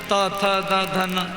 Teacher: दांत से जीभ जब दांत में टकराएगी तो ये दंत्य वर्ण का उत्पत्ति होती है